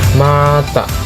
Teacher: Bibir menutup, suara keluar dari hidung.